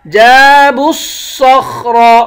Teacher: صاد خا را ان تینوں الفاظوں کو موٹا پڑھیں گے